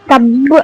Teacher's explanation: தப்பு அப்படின்னு ஷத் இருக்கு இல்லைங்களா, ஸோ தப்பு அப்படின்னு ஒரு அழுத்தி கல்கலாவுடன் நிப்பாட்ட வேண்டும்